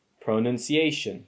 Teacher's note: the primary stress is on the fourth syllable a and the secondary stress is on the second syllable none